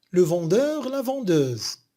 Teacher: il y a la variation consonantique R, vendeur, R, versus Z, qui devient Z, avec changement de timbre vocalique, E pour heure et E pour euse.